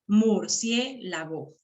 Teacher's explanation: la I con la E se han quedado juntos en una misma sílaba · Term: Diptongo